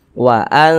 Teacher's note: Bunyi nun sukunnya kita baca samar. Jangan kita baca waan, nunnya tuh berbunyi n-nya tuh jelas sempurna. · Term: ikhfa